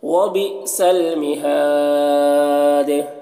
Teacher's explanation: تو دال میں قلقلہ ہوگا اور مد عارض وقفی بھی ہوگا